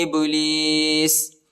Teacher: با کو جھٹکا دینا ہے، حروف قلقلہ ہے